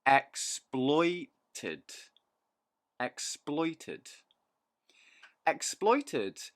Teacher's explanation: three syllables stress on the second syllable